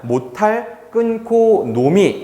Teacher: 절음부호 때문에 끊어졌기 때문에 니은 발음을 그대로 유지한다라고 보시면 되겠습니다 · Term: 유음화가 생기지 않고